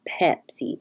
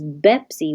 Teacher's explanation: there's no delay immediately my voice is already going · they're both made in the same place the lips touch and the difference is voicing so is voiceless your vocal folds don't meet so it's just